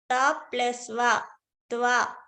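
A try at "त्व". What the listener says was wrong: T plus va. Usually you should say, this is not ta. This is t. T plus va.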